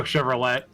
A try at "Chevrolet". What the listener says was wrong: The car is pronounced Chevrolet, bro. The T is silent.